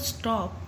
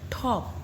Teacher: But when we say the word top, तो जब starting में ट साउंड आती है तो उसके साथ थोड़ी सी ह साउंड भी आती है, तो वो एस्पिरेटेड है